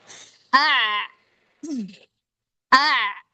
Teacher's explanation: Kalau ain ketika disukun dia masih ada suara tapi enggak banyak setengahnya.